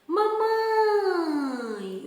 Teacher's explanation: a sílaba pronunciada com mais força é o quê? O mãe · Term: sílaba tônica